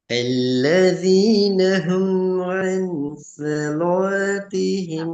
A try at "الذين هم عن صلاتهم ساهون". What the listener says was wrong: மாறுது பாத்தீங்களா. சொலாத்திஹிம் என்று வருது. சொ லா அல்ல ல சொ ல.